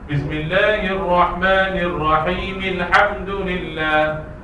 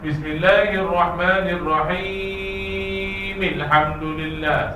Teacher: Himil hamdu 2 harakat saja. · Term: mad asli